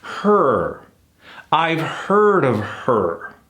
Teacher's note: we can kill that vowel sometimes not all the time when an r is involved